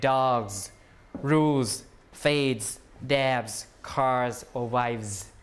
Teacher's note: So all of these are pronounced with a Z rather than an S, okay? Because the sound before the plural is a voice sound. G, L, D, B, and so on, okay? · So the plural cannot be voiceless because, or else the voicing will not match, right? So you change the S to the voice version of the S, which is a Z. So you pronounce it like dogs, rules, fades, dabs, cars, or wives.